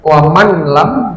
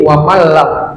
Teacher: Ya, masuk nun sukunnya ke lamnya tapi tidak didengungkan. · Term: idgham bila ghunah